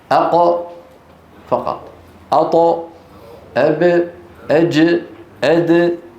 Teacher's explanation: المقلقل ساكن ليس معه فتح للفم ولا ضم للشفتين ولا خفض للفك السفلي وارتفاع لوسط اللسان